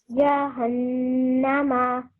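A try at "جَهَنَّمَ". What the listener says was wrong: Beautiful. Excellent.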